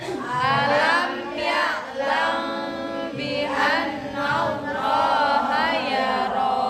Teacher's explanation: Tadi ya'lam nggak boleh mingkem. Ikhfa Syafawi.